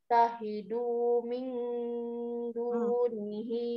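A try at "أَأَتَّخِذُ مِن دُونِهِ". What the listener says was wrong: atahidu min du atahidu jangan panjang diudunya jangan terlalu panjang diudunya bukan terlalu jangan terlalu panjang tidak panjang aat tahidu mindu nihi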